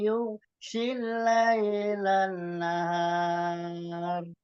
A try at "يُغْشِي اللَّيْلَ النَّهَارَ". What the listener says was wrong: Lannya ditahan lagi Pak. Gunnah musaddadahnya.